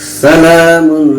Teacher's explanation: سین پر زبر ہے، زبر کو جلدی پڑھیں، تھوڑا بھی نہ کھینچیں. لام پر کھڑا زبر ہے، کھڑا زبر برابر ہوتا ہے الف مدہ کے، اس لیے کھڑا زبر کو ایک الف برابر کھینچ کر پڑھیں گے.